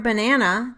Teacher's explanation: For example, in the word banana, the second syllable has primary stress, and both of the remaining syllables are unstressed